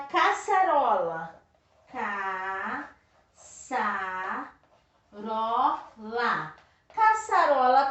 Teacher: não é última é a penúltima se é a penúltima é paroxítona